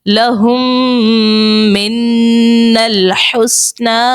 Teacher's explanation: میم کے بعد دوسری میم ہے تو وہاں پر ادغام شفوی ہوگا، وہاں پر غنہ کریں گے · میم مشدد اور نون مشدد دونوں میں غنہ کریں گے